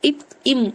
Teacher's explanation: இப்போ 2 உதடு பொருந்துவதால தோன்றும். இப் இம். அப்ப 2 உதடு, லிப்ஸ் ரெண்டுமே ஒட்டும்.